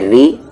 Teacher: را پر زیر ری، یہاں پر را لائٹ ہوگا کیونکہ اس پہ زیر ہے، اس کی آواز نیچے جا رہی ہے